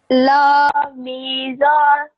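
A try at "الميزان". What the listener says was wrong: Yes, al. This is al. There's a alif as well. Al.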